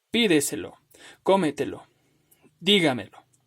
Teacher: La sílaba tónica se encuentra antes del antepenúltimo lugar